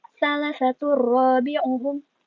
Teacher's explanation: Ini juga sama ya, ujungnya N, salah satun kan, tapi karena ada huruf ro, maka dimasukkan N-nya itu ke huruf ro. Jadi N-nya hilang, R-nya yang ada dua.